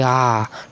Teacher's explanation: जिन स्वरों के उच्चारण में मुख पूरा खुला हो, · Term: विवित्र स्वर